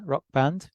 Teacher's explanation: so we keep the B and lose much of the K